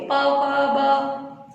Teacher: केवल लिप्स का काम हो रहा है, तो ये ओष्ठ्य।